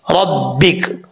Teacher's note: जब वक्फ़ करेंगे तो काफ साकिन हो जाएगा